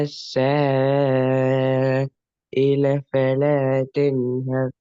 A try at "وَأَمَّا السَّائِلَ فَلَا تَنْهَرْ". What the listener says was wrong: இல்ல என்றது போற மூச்சு போகப்படாதான் தொடர்ந்து ஓதணும். وَأَمَّا السَّائِلَ فَلَا تَنْهَرْ.